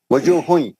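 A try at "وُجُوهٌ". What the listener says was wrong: وجوہ نہیں ہے, واؤ پہ پیش ہے. نہیں, وجوہ واؤ پہ زبر نہیں ہے, واؤ پہ پیش ہے. نہیں, وجوہ نہیں, وجوہ نہیں, غلط. گول ہوٹ کر کے پڑھیے, پیش کو ہوٹ گول کر کے پڑھیے. وجوہ ہوئی, وجوہ ہوئی.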